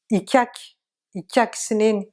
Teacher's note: Sauf peut-être le K, où des fois c'est vraiment K, K, et des fois c'est K, K, avec un espèce de I. Les linguistes disent un peu mouillé, K mouillé. K mouillé, c'est quand vous avez la plupart du temps un I devant le K, que les linguistes l'expliquent comme ça.